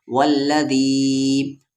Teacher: مد کے سمبل کے بعد حمزہ ہے یعنی اس مد کو 3 سے 4 الف کے برابر کھینچیں گے